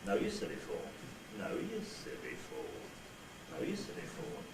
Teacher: The rise fall only spreads it over 3 syllables at the beginning of the nuclear accent group, then it levels out. So that nucleus, so rise fall on no, in no you silly fall, will sound like this.